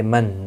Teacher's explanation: نون ساکن کے بعد حمزہ آیا ہے، اظہار حلقی ہوگا، گناہ نہیں کریں گے، یعنی نون ساکن کو ظاہر کر کے پڑھیں گے.